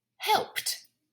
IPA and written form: hɛlpt (helped)